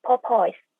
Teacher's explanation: we can hear the same stress on each syllable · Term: equal stress